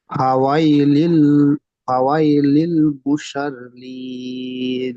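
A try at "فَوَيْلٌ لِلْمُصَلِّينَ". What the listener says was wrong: লামের উপর পেশ আছে, দু পেশ। লাম লাম দো পেশ লুল, এখানে হরফে ঈদগামে নাকিস হবে, ঈদগামে তাম হবে। তানবিনের পরে লাম এসছে।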